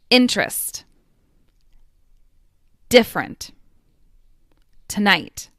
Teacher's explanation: All of them have unstressed schwas, unstressed uh sounds.